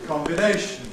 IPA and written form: ˌkɒmbɪˈneɪʃn̩ (combination)